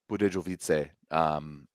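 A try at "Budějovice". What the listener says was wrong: No. Budiovice. Yeah, don't pronounce the J.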